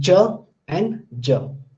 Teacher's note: the place of ch and j is alveopalatal. That means in between alveolar ridge and the palatal, ch and j. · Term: affricate